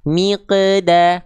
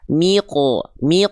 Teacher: Yang awal dia tipis, pangkal lidahnya kurang naik, miqda, enggak. Yang kedua insya Allah lebih tepat dibanding yang sebelumnya karena dia tebal.